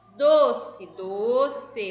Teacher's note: o do é mais forte, então ela é uma paroxítona.